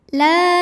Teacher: ada huruf lam dengan baris fathah yang panjang cara membacanya kita panjangkan lamnya ini dua harakat saja lakinil lam pada lafaz Allah atau lam jalalah dibunyikan secara tarqik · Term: Mad thii muqadar